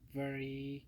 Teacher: the v sound is a voiced labiodental fricative which means the bottom lip gently touches the